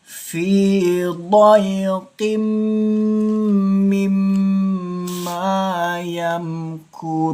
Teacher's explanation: Ketika tanwin bertemu dengan mim bertasydid, termasuk hukum bacaan idgham, dengungkan dua ketukan.